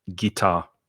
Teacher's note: in english guitar so i stress the second syllable